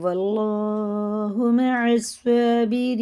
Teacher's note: مئتين وإن يكن منكم ألف يغلبوا ألفين بإذن الله، زال باریک ہے اور اللہ کا لام زیر سے تو باریک پڑھیں گے، یغلبوا ألفين بإذن اللہ، اور اب یہ اللہ کا لام زبر کے ساتھ ہے تو یہ پر پڑھیں گے، یعنی منہ بھر کے موٹا کر کے